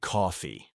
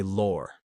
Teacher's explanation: It's all about that stretched awe sound.